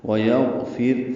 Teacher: فا کی زیر کی وجہ سے را باریک ہے، لام باریک، کاف باریک میم ساکن پہ اظہار شفوی، ویغفر لکم، وقفاً اظہار شفوی، وصلاً بھی اظہار شفوی ہی ہے۔